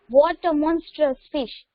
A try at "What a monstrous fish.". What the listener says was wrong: So you have to read in an exclamatory sentence in a shocking way. Read it again.